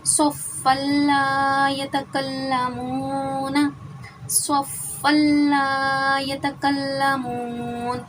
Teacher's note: اب 2 زبر 2 زیر 2 پیش کو تنوین کہتے ہیں۔ دیکھیں 2 زبر کی تنوین کے بعد یہاں پہ لام مشدد آ گیا ہے ادغام بلا غنہ میں سے، تو یہاں پر ہم ادغام بلا غنہ کریں گے، یعنی کہ غنہ نہیں کریں گے